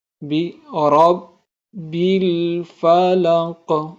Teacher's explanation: یہاں را پہ زبر ہے تو ہم اس کو موٹا پڑھ رہے ہیں